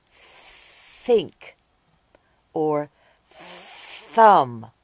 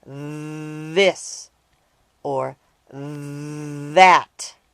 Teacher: this or that the sound is called a voiced th sound both the unvoiced and voiced th sounds are made by sticking out your tongue and blowing out air the only difference is whether or not you use your voice while you blow